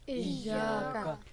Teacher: تو ایاک نعبد، لفظ ایاک، یہاں پہ یا کے آگے الف مدہ ہے، اس کو ہم ڈبل کر کے پڑھیں گے، کا اس کو ہم شارٹ میں پڑھیں گے